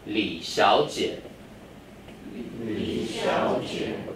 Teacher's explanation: I say the Li by itself, then Xiao Jie is a word. So it becomes second and third.